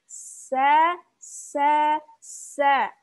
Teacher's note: Nah, lagi-lagi, karena dia beda dengan huruf sod, maka sin ini diucapkan dengan tipis. Turunkan pangkal lidahnya. Sa. Bukan so, tapi sa.